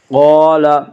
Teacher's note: قاف کو پر پڑھیں گے، قاف حروف مستعلیہ میں سے ہے۔